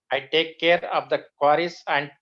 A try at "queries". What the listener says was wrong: Not quarries. What you're pronouncing is a different word altogether. Quarry is a different meaning. Query.